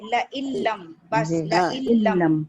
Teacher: और इसमें टाइम एक अलिफ के बराबर भी नहीं दे रहे